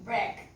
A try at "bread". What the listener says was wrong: Bread. Bread with D at the end.